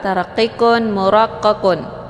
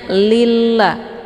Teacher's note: lafaz Allah yang mesti dibaca tipis karena sebelum lafaz Allah ini berharakat kisrah